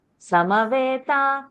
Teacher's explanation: ma is full. So you cannot say Samveta.